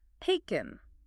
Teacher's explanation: for the past participle taken, the stress is on the first syllable.